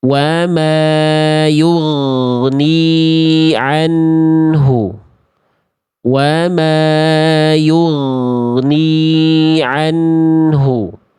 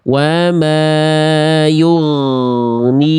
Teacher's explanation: bunyi vokal tambahan berupa e-nya itu udah enggak ada. Kalau ada bunyi tambahan berupa e di ujung pelafalan gin sukun, maka itu pasti di ee pasti dia memantul.